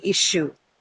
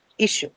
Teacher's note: Issue as a verb or a noun is going to have its stress on the first syllable.